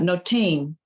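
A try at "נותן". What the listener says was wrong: That's too tall to be a vav. It's got to be a final nun because it drops below the line there. Notain.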